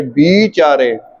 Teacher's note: ਪਿਛਲੀ ਮਾਤਰਾ ਹੈ ਉਹ ਲਮਕਾ ਕੇ ਬੋਲੀ ਜਾਂਦੀ ਹੈ, ਲੰਬੀ ਕਰਕੇ